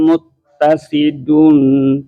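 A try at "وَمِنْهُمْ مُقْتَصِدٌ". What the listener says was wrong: Muqa. Qalqalah muqa. Wa minhum muqtasid.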